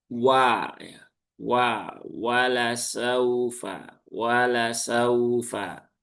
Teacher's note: Kemudian di sini ada huruf waw. Ya, huruf waw ini huruf yang tipis. Dia diucapkan dengan cara memonyongkan bibir dulu